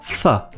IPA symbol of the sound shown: ð